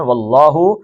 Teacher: اللہ کے لام کے پہلے زبر آ گئی ہے تو اس میں جلالہ موٹا پڑھنا ہے